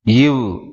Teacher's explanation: மேல்வாய் பல்லை கீழ் உதடு பொருந்துவதால் பிறக்கிறது